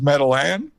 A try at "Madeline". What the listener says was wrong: Well, it just felt like you were saying the last syllable really wrong.